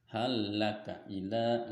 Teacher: lam yang pertama maksudnya diidghamkan masuk ke huruf yang di depannya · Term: idgham mutamatsilan